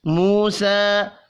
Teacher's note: واو مدہ اور کھڑی زبر ایک ایک الف کے برابر کھینچ کر پڑھیں گے